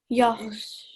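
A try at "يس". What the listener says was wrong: So your lips are out when you say the sword. Yas. It sounds like sh, but it's yas. So you need to be sure it's not a sh sound, but because it's so thick and heavy, it kind of makes a s sound when the lips come out.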